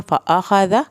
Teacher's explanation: ज़ाल को नरम पढ़ना है